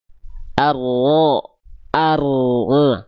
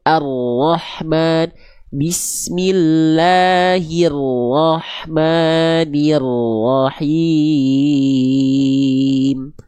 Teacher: Ar ar tuh. Jadi si ujung lidahnya enggak nempel. yang nempel punggung lidahnya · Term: huruf ro